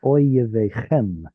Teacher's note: Be sure to put the stress on the end. Chem is always stressed. And then that's an audible shva.